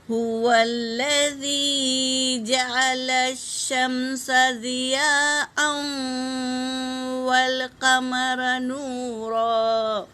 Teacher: مد ہے، مد متصل، اسے 3 سے 4 الف کے مقدار کھینچ کر پڑھیں گے